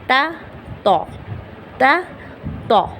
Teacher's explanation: تے کو ہم موٹا کر دیں گے تو بن جائے گا تو. تے کو موٹا کر دیں تا تو، تا تو.